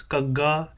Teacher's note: it's a very strong aspirated G sound